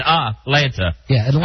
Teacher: I don't hit any T.